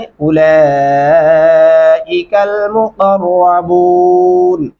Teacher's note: اولئک لام کے اوپر 4 الفی مدہ ہے، ہم آواز کو 4 الف کے برابر تک لمبا کرتے رہیں گے۔ مقربون قاف گلے سے ادا کریں گے، را کو موٹا اور پر کر کے پڑھیں گے۔